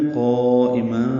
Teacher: حمزہ کو جلدی سے پڑھیں گے اور ما مد عوض ہو جائے گی، 2 حرکات لمبا کریں گے · وقفاً ملانے کی صورت میں قائما، ذالک تنوین کے بعد دال آنے کی وجہ سے اخفا کرنا ہوگا